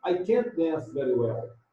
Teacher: Eu ponho, né, a entonação negativa e stress a palavra can't.